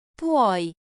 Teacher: Feel the glide, PWOI. Now add a friendly rise at the end.